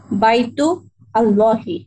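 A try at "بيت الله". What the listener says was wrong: একসাথে একসাথে মাঝখানে আল্লাহর যে ওয়াসলা, ওইটা আর তখন পড়া হবে না, একসাথে পড়লে হ্যাঁ বাইতুল্লাহ।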